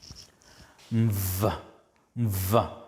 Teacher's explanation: a combination of the nasal sound m, which is a bilabial, and the voiced labiodental fricative v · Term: composite sound